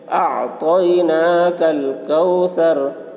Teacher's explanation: واو ساکن سے پہلے زبر ہے، واولین ہوا، اس لیے واولین کو نرم آواز کے ساتھ جلد پڑھیں، معروف پڑھیں، مجہول آواز سے بچیں۔